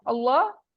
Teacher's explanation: लफ्ज अल्लाह का लाम मोटा पढ़ा जाएगा। क्यों? क्योंकि उससे पहले जबर आ रही है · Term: लाम जलाला